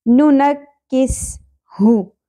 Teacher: وَمَن نُعَمِّرْهُ نُنَکِّسْهُ، آدھی الف کے برابر پڑھا جائے گا، نکس، نون کی زبر کاف کے ساتھ پہلے ملے گی، تشدید کے نیچے وہی حرف 2 دفعہ ہوتا ہے، نکس، ٹھیک ہے۔ سین، سین باریکی کے ساتھ ادا ہوگا، سیٹی کے ساتھ، ٹھیک ہے۔ نُنَکِّسْهُ، ہاں اقصی حلق کے ساتھ جیسے ہم نے یہاں پہ ادا کیا تھا۔